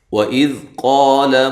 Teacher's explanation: قا الف مدہ ہے اور قاف کو موٹا پڑھنا ہے، لام کو لمبا نہیں کرنا.